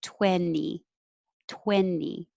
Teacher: or you can say 20 with the t no problem but most native speakers aren't going to say that t